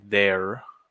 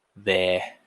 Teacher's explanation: in Australian and British, you can't recognize any R we just say there, We just trail off into some consonants, some vowels.